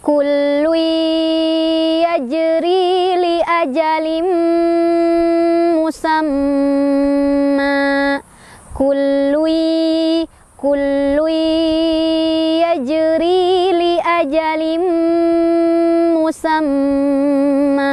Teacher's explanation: tanwin ketemu mim, itu juga masuk sambil berdengung ya. Jadi dua-duanya berdengung, jadi ditahan.